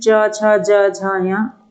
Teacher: तालू से जो उच्चारण होता है वो चा वर्ग का होता है